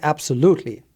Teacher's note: then loot is the main stressed syllable in absolutely